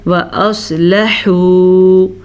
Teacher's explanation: سواد کو پر پڑھنا ہے، سواد حروف مستعلیہ میں سے ہے